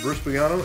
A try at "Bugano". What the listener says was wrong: The G is silent.